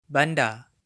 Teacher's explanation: Notice that the final R is silent in many Malay accents, including the mainstream Johor, Riau, Selangor Malay.